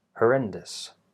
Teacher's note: So the unstressed syllables here, are not stressed. Also the us at the end, not dous, but dus.